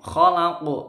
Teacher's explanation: qafnya qalqalah kubro ini mantul, jadi mantul besar, itu qafnya dibaca agak mencucu.